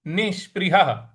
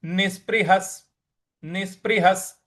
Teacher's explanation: तो ये हो जाएगा निष्पृहः निष्पृहः। और ह के बाद जो विसर्ग है उसका उच्चारण हमें आगे जो स लगा हुआ है उसके साथ जोड़ देना है